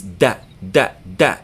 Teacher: it makes English D but like T which doesn't make the puff of air as in English T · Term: Dal, dal